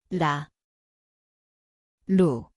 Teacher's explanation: ang lugar ay dulo ng dila, magaan na tap